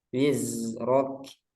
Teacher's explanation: ro tebal kafnya tipis